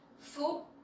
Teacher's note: with dấu sắc you have to go up a little bit, and the tone has to be very strong